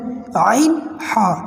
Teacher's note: عین ہا، ان کی آواز بیچ حلق سے آتی ہے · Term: حلق کا درمیان